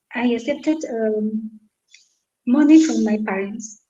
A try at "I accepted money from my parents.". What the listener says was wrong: Yeah, you can say that.